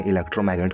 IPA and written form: ɪˌlɛktrə(ʊ)ˈmaɡnɪt (electromagnet)